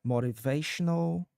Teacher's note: Using a flap T for that middle sound in motivational is perfectly natural in American English. Uh it'll sound like a quick soft D sound so it flows smoothly.